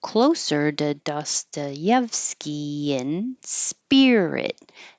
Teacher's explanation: this to will change to da